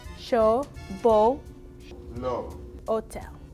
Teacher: To make the O sound, your lips should be rounded and your mouth should be pretty closed. Your tongue should be towards the back of your mouth, not touching your teeth.